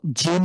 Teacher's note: জিভের মাঝখানটা উপরের তালুর সাথে লাগিয়ে, উপরের তালুর সাথে খুব স্ট্রংলি লাগিয়ে এটা উচ্চারণ হবে। বাংলার যেরকম জিম সেই ঠিক সেম ঐরকম। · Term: তালব্য বর্ণ